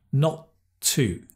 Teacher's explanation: Notice the “not and the “too” There's only one t sound.